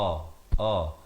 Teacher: Hamzah di pangkal kerongkong.